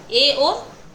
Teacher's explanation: विवत्त में तो फुल खुलाव विवत्त से थोड़ा कम होता है। ये भी खुले होते हैं पर पूरी तरह नहीं। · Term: अर्ध विवत्त